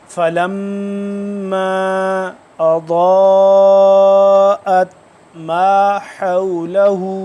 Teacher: اب یہ ضاد موٹا ہے اور لمبا بھی ہو رہا ہے، 3 سے 4 الف کے برابر لمبا بھی کرنا ہے